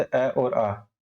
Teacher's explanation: कंठ में आते हैं, कंठ से उच्चारित होते हैं